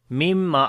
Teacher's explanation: After the noon sakin the next is meme. We make idgham with gunna. Like this noon we merge into meme, so that's then it becomes idgham, and then we make gunna as well.